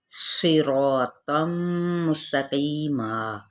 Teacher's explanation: सौद भी पूरा है, रॉ भी पूरा पढ़ा जाएगा अलिफ मद्दा के साथ, एक अलिफ के बराबर खींचेंगे। तनवीन ज़बर है, तो भी पुर लेटर है, मीम के साथ मिलाएंगे।